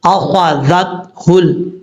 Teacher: یہاں پر ہا کے حمزہ کے بعد جو خا ہے، خا کو پر پڑھا جائے گا کیونکہ حروف مستعلیہ میں سے ہے